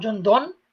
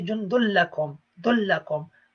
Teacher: It's not jundun, it's jundullakum. The noon disappears from the tanween.